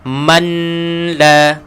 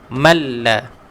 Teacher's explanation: Tak payah kita baca manla. Terus lesapkan huruf nun, gugurkan huruf nun. Malla. Okey, idgham bila gunnah, idgham kamil. · nun mati bertemu lam, hukumnya adalah idgham bila gunnah